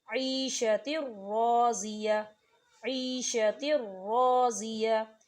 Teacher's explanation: اب آپ تنوین کی مثال کو دیکھیں، عیشۃ راضیہ، عیشۃ راضیہ، تو دیکھیں تا کے نیچے تنوین ہے اور تنوین کے بعد را آ رہا ہے، اور را کے اوپر تشدید ہے، اور را جو ہے حروف ادغام میں سے ہے، تو یہاں بھی غنہ بالکل نہیں ہوگا،